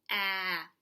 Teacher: I can feel my throat vibrate when I say it ah that means it's voiced it's also continuous listen ah I could just go on forever